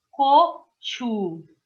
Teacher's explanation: Vocês repararam que o CH, eu estou soltando o ar nele, porque ele é aspirado